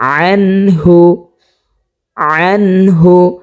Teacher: নুন সাকিনের বামে হা পেয়েছি, সে কারণে আমরা এখানে গুণনা ছাড়া স্পষ্টভাবে পড়ব। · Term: নুন সাকিনের ইজহার